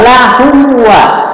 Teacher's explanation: Izhar itu jelas, syafawi itu di bibir. Ya jelas di bibir. Nah, ini alatnya hanya dengan bibir ini. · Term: izhar syafawi